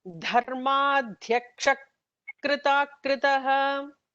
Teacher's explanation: visarga followed by a ka will have like an extra h kind of an emphatic sound there. So it becomes dharmadhyaksha krita kritaha.